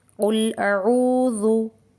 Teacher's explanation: یہاں واو مدہ ہے، اسے 2 کاؤنٹ کھینچ کر پڑھیں گے